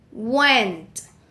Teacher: the sound is bilabial glide and voiced